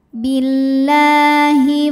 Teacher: karena lam berharakat fathah panjang maka lam panjang dua harakat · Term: Mad Thobi'i